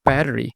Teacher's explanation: his T sounded like a half-hearted d this also happens in case of words like water and matter uh this is one of the Hallmarks of American English